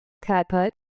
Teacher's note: Cut has a short open sound made in the center of your mouth. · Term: short u sound